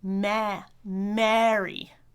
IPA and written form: mæri (marry)